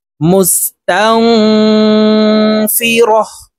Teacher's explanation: এই নুন সাকিনকে নাকের ভিতরে লুকাইয়া গুন্নার সহিত পড়তে হবে। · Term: ইকফা গুন্না